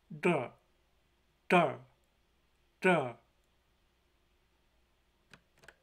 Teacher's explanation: The Latin letter capital D in Klingon represents a retroflex voiced stop.